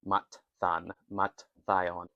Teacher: If I were to pronounce it instinctively I would say mathan and mathion, but I assume that because there's a T and then a theta, that you'd be expected to sort of run them together, truncate them together